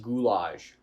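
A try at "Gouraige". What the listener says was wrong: Gourage? It's not an L.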